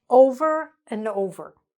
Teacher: instead of and we're just saying n